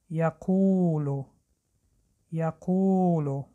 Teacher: این را فراموش نکنید که در وقت تلفظ آواز او لبها به پیش برآورده می شوند